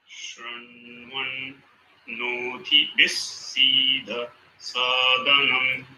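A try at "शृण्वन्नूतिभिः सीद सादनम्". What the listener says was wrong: Perfect. Just Swarita can be a little harder. But otherwise, it was correct.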